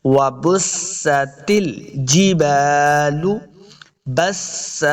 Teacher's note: ہوں گے تب واو کا مخرج صحیح ادا ہوگا، وبستل، بس، با کو سین کے سامنے لانا ہے، سین پہ سیٹی کی آواز آئے گی